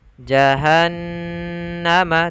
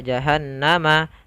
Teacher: ada Nun bertasydid maka ini wajib kita tahan